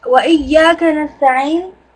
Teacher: make sure that the ayn is from the middle of your throat. So you have a strong ayn there